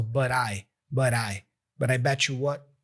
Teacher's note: we have the T for but being pronounced as a flap T